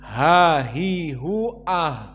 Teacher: jika disukunkan maka keluar jaroyan annafs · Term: alhams